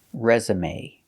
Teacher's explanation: we pronounce the e at the end with the long a sound like day or pay resume so pronunciation your first syllable is stressed re resume using